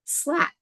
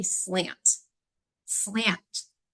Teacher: the air flows coming through my nose it's nasalized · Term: nasalization